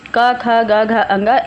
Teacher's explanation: का वर्ग के जितने भी व्यंजन होंगे, का, खा, गा, घा, अंगा, इन सभी की ध्वनियाँ हमारी कंठ ध्वनियाँ मानी जाती हैं